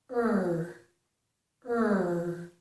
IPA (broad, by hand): əɹ